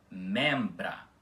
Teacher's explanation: Ou seja, já que em outra parte da aula explicamos que o M não faz nasalização nenhuma com vogais, então o E continua com o som aberto